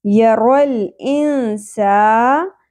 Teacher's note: سین میں سیٹی کا ایلیمنٹ ہوتا ہے